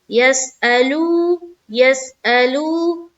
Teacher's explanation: लू में खींचेंगे, जबकि आ में हमें खींचना नहीं है, वहां पर जल्द अदा करेंगे।